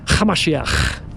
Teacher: So if we were to be transported, we went back in time 2,000 years, you would hear his followers call them Yeshua Hamashiach, with a ch sound. You have to add a little bit of a throaty little ch.